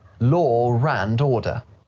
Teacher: sound like law and the next word begins in an uh you'll often hear a r sound linking them together